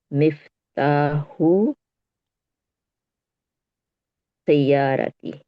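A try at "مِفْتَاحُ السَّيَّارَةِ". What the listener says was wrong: मिफ्ताहुस सय्यारती, लाम को स्किप करना है और सीन पे जाना है। शमसी हरफ है। मिफ्ताहुस सय्यारती।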